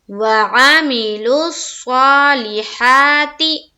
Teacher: लाम को स्वाद से मिलाया, क्यों, क्योंकि स्वाद के ऊपर क्या है, तशदीद है